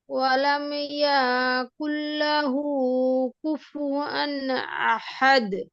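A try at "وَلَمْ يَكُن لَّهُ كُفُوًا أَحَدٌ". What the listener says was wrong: এই ইয়াটা টান হয়ে গেছে, ইয়া টান হবে না। আচ্ছা আপু এভাবে বলেন যে ওয়ালাম ইয়াকুল্লাহু, ওয়ালাম ইয়াকুল্লাহু, ইয়াতে ডিলে হবে না।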